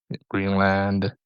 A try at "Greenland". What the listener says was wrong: You don't say the land like that, Greenland.